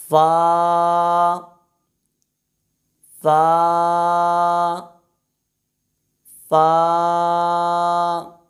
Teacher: حرف فا کا مخرج یہ ہے کہ ہمارے اوپر والے دانتوں کے کنارے نیچے والے ہونٹ کے تر حصے پر لگیں گے۔ ہمارے ہونٹ کے جو 2 حصے ہوتے ہیں، آگے والا حصہ اور اس کے ساتھ پیچھے والا تر حصہ، تو تر حصے کے اوپر والے دانتوں کے کنارے لگیں گے، اور حرف فا کی پہچان یہ ہے کہ اس کے اوپر ایک نقطہ ہوتا ہے۔